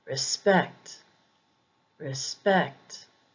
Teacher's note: the emphasis is usually on the second syllable